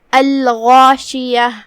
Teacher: کلمت الغاشیہ یہاں لام پہ جزم ہے، یہاں لام القمریہ ہے تو ہم لام کو ظاہر کریں گے. حرف الغین کی ادائیگی حلق کے اوپر والے حصے سے ہے، غین حروف تفخیم میں سے بھی ہے تو ہم غین کو بھاری آواز میں ادا کریں گے